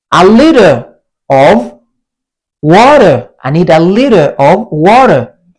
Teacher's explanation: We were talking about a flat T turning into a soft D.